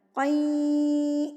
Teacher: تنوین کو یا سے ملایا، مع الغنہ غنہ کے ساتھ ملایا، تو قین، ناک میں آواز چلی گئی، غنہ کے ساتھ ملا رہی ہوں میں، قین، اس کو کہتے ہیں ادغام مع الغنہ۔